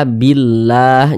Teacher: huruf lam yang terdapat pada lafaz Allah ini huruf lam jalalah nah ini dibaca tipis · kalau ada lafaz Allah sebelumnya harakat kasrah lafaz Allahnya dibaca tipis